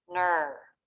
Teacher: Tongue tip is up for the N, then pulls back and up for the vowel, R consonant. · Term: stressed syllable